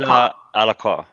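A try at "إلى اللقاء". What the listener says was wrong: Not qua. That's what, when we see Q in English, that's what we think of, but it's qa. Qa. Ila al-liqa.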